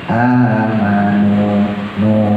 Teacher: Ingat nunya cukup 2 harokat, jangan panjang-panjang ya, direm. Amanu, nu. Jadi antara a sama nu panjangnya sama.